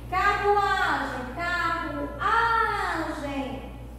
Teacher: Então é o A, a sílaba mais forte da palavra